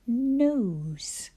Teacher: Your tongue is much further back in your mouth than it is when we say a word like nose. N in nose, your tongue is just behind your teeth.